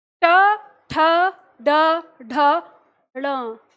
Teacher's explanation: जीव ऊपर उठके मूर्धा को छूती है और झटके से नीचे गिरती है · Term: ट वर्ग